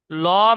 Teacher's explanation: আওয়াজটা মুখ গোল করে, আওয়াজটা মোটা মতন হবে। ল, মুখটা গোল করে উচ্চারণ হবে। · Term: পুর